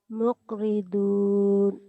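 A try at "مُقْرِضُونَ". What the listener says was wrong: Kan orang Nusa Tenggara bukan orang Jawa. Masa huruf matinya ke K? Jangan mu'. Mu'ridun, mu'ridun, mu'ridun.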